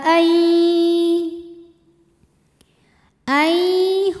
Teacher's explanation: nun sukun dileburkan ke ya disertai bunyi dengung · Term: Idam bunah